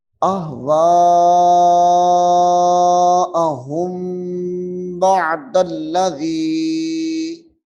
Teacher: یہاں پہ ادغام کا قاعدہ ہے، غنہ ہوگا، پھر یہ دال جو ہے لام کے ساتھ ملے گی